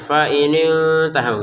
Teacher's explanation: nun sukun bertemu ta dibaca dengan samar